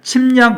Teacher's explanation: 앞에 오는 미음, 비음 때문에 뒤에 오는 리을이 뭐로 바뀌었나요? 니은으로 이렇게 바뀌었죠. 그죠? 그러니까 당연히 얘도 비음화가 된 거고 방향성으로는 순행동화고 결과적으로는 불완전 동화가 된 겁니다.